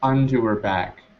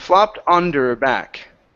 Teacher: words like into and onto, okay, become inda, okay, so inda and onda.